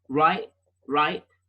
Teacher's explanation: That's the glottal stop with the word right.